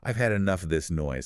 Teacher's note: That little word of usually serves as an unstressed rhythmic bridge.